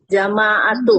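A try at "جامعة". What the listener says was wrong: Nah, kalau jamaah kebalik, jamaah itu mah jamaah. Salah. Jamiah, Bu. Iya, bahasa Arabnya jamiah.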